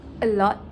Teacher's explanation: He lengthens the word a lot, as in a lot to show it has been a current topic among people. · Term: voice lengthening